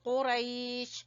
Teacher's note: قاف کو زبان کی جڑ سے ادا کریں گے